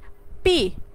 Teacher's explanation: তার মানে কি বাইলেবিয়াল সাউন্ড মানে কি যে সাউন্ডগুলো উচ্চারণের সময় আমাদের lower lip and upper lip দুইটা একসাথে সংস্পর্শে আসে কিংবা দুইটা একসাথে কি লাগে, তখন ওই সাউন্ডগুলিকে বাইলেবিয়াল সাউন্ড বলা হয়।